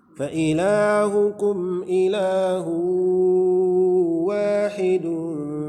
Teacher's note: Fa ilahukum ilahu, fa ilah mad asli, hukum ilahu mad asli, hu tanwin berjumpa dengan waw, tanwin berjumpa dengan waw, idgham bi gunnah. Jadi dimasukkan ke huruf waw, kemudian dilanjutkan dengan gunnah, dengan dengung.